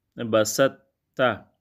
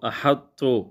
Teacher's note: پہلے حرف طا کی صفت استعلاء و اطباق باقی رہے گی مگر قلقلہ نہیں ہوگا. اس ادغام کی بس یہی 4 مثالیں ہیں.